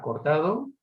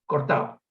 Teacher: Finalmente la tercera variable es la consonante, esa misma consonante, la consonante D, en posición intervocálica, una palabra como cortado, con 2 variantes fundamentales, la pronunciación aproximante relajada, cortado, y la pronunciación elidida, cortado, que es la que, si a mí me pillan en un momento de relax, sería la que pronuncio sin lugar a dudas.